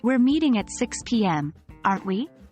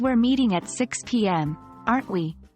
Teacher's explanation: The first sentence, with a rising tone, is an open question, while the second, with a falling tone, feels more like a confirmation of the fact, subtly guiding the listener to agree.